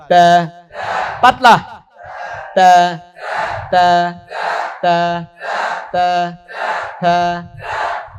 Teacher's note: জিহ্বার আগা দাঁতের গোড়া, তা পাতলা